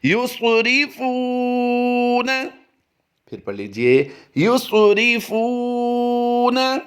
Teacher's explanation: इस वक्त आप अपनी स्क्रीन पर जो लफ्ज़ देख रहे हैं युसरिफूना, आइए इसकी मशक़ करते हैं। याद रहे, स्वाद को हमने पुर करना है और वाव साकिन से पहले हरफ फा पर पेश है तो वाव मद्दा करते हुए से एक अलिफ खींच कर भी पढ़ेंगे